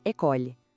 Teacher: A palavra para escola se diz école. O som para no L. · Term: E mudo